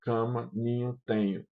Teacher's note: o abaixamento do véu do palato para articulação da consoante nasal adjacente é realizado antes da completa articulação da vogal que antecede esse segmento nasal. Isso faz com que tais vogais sejam percebidas como nazarizadas. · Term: nasalizadas, Nasalização